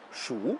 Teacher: Le premier caractère, si vous le prononcez au troisième ton, Shu, cela veut dire compter et cela devient un verbe.